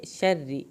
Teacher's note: را کو پر نہیں کرنا، پتلا پڑھنا ہے